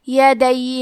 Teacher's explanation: حرف دال پہ تشدید ہے تو ہمیں 2 حرف کے برابر دال کو پڑھنا ہے